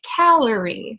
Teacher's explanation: it starts high and it gets lower